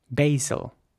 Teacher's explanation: British English this is pronounced Basel with an R sound and in American English it would be pronounced basil with an a sound